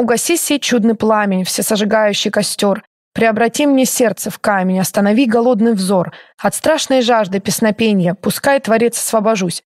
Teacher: здесь аллитерация у нас на свистящие и шипящие